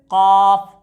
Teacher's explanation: लेहात यानी कौवे के मुत्तसिल जुबान की जड़, उससे काफ अदा होता है